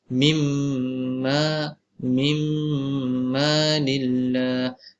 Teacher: Mim masuk idgham dan juga dibaca dengan 2 harakat